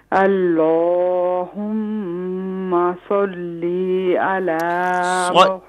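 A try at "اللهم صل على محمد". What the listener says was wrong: لام کو نہ کھینچیں لام کو نہ کھینچیں صلی میں جو لام ہے محمد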